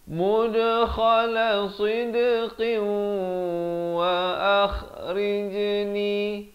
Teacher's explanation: Sekali lagi qalqalah di sini. Sidqin, masuk beserta dengung di sini. Tanwin bertemu waw, idgham bi gunnah 2 harakat.